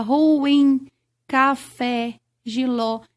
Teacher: a sílaba tônica é a última ou seja a sílaba mais forte da palavra ruim café jiló eu chamo de oxítona quando a tonicidade recai